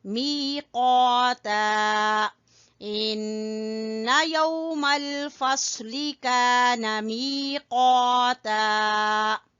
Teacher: می میں یا مدہ اس لیے می کو کھینچ رہے ہیں اور قاف کے ساتھ الف مدہ تو اس لیے قا کو کھینچ رہے ہیں.